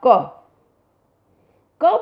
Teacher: क बोलने में हमारी जो मुख से निकलने वाली वायु है उसको ज़्यादा जोर नहीं लगाना पड़ा, हल्की सी हवा के साथ ही क की ध्वनि बाहर आ गई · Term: अल्प प्राण